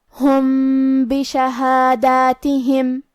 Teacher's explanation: ہم میم ساکن کو تھوڑا سا چھپاتے ہوئے لیکن غنہ کے ساتھ یہ حکم کو ادا کریں گے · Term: اخفاء